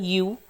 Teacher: Produced with the tongue as far back and as high in the mouth as is possible with पर्स्ड lips. तो ये 8 number पे जो वॉल हमारा रहता है यू, ये वाला साउंड इससे प्रोड्यूस होता है जब हमारी टंग बिल्कुल बैक में और as high in the mouth पे आएगी।